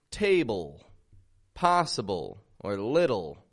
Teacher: words that end in the letters l e these have a dark l sound